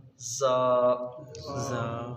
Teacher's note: حروف صفیریہ ہے، سیٹی کی طرح آواز نکلے گی، زبان کی نوک اور دونوں دانتوں کے اندرونی کنارے سے